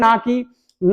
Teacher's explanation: ना बोलते हैं तो दांत में जीव लगती है और नाक से भी आवाज़ निकलती है तो दांत और प्लस नासिक बोलते हैं अब बात